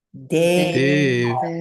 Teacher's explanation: And when we look at it, which we don't have here, but the A after the N is long, Devana, and then the I at the end is long